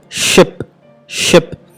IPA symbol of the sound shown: ʃ